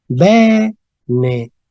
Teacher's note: Tenemos una E, esta E, ¿verdad? Acentuada, de manera que nos va a dar una E, nos va a dar la E abierta.